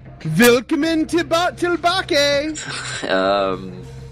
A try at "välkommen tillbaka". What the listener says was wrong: That was close. There's no willkommen, it's velkommen. Yeah. It's just like a V. So it's velkommen tillbaka.